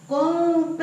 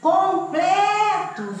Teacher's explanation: Você viu que aqui não tem acento nenhum, mas houve uma emissão de voz bem mais aguda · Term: sílaba tônica